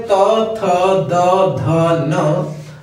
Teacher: इन सब का उच्चारण स्थान दंत होता है, दांत से होता है इनका उच्चारण, हवा दांतों से टकरा कर निकलती है। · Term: त वर्ग